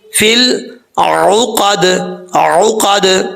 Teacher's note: قاف حروف مستعلیہ میں سے ہے، پر پڑھا جائے گا. دال کو جب ساکن کریں گے تو دال قلقلہ ہے، حروف قلقلہ میں سے ہے تو یہاں پہ قلقلہ بھی ہوگا